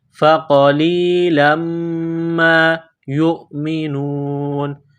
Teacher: تنوین کو میم کے ساتھ ملانا ہے، میم مشدد ہے، غنہ کریں گے، آواز ناک میں چھپائیں گے